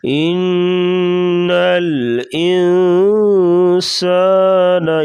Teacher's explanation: ان الانسان، یہاں پر بھی غنہ ہوگا یعنی اخفا، ناک میں تھوڑی سی آواز چھپا کر غنہ کریں گے